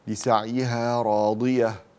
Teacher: الضاد حرف قوي، لسعيها راضية، لا تقولي راد را را أو رادية مثلا بالدال